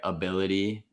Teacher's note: the very first vowel even though it's the very first vowel it's the schwa · even though it's the very first vowel, it's a schwa. Yeah. Schwas are never the stressed syllable in a word.